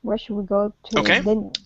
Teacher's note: our tone goes up just a touch more than when we would normally say dinner, right? So it's dinner, so just a touch more.